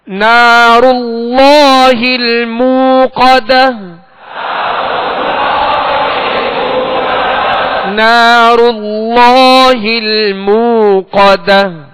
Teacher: اللہ عز و جل کے لام سے پہلے زبر ہے، لہذا اللہ عز و جل کا لام پر یعنی موٹا پڑھا جائے گا. اللہ عز و جل کے لام سے پہلے زبر پیش ہو تو پر پڑھیں گے اور اگر زیر ہو تو باریک پڑھیں گے.